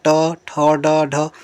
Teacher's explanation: जहां पे जीभ मुड़ जाती है समझो वहां मुर्धन्य व्यंजन है। यानी कि जीभ आपका मुड़कर मसूड़ों से टकराती है। तो मुर्धन्य व्यंजन है।